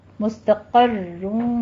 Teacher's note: مستقروں میں قوف کو بھی پر پڑھنا ہے اور را کو بھی پر پڑھنا ہے